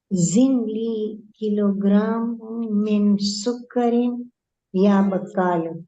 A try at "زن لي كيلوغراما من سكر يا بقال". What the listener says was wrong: Sukkari, not Sukkarin. It's Alif Lam without Tanween.